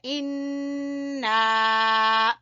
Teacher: انا، نون مشدد کا ہم غنہ کریں گے، ٹھیک ہے۔ انا، پھر مد ہے، مد کو کھینچیں گے۔